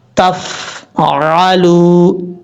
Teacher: تفعلوا یہ غلط ہے، آواز جم جائے، تفعلوا، اس طریقے سے سمجھ آپ کو لگ گئی ہوگی۔ عین کو پڑھتے وقت آپ نے اچھے طریقے سے کلیئر کر کے پڑھنا ہے، حمزہ کی آواز نہیں آنی چاہیے